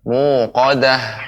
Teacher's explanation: ta'al marbutah yang disukunkan berubah jadi ha, dan huruf ha dia memberikan sisa aliran udara.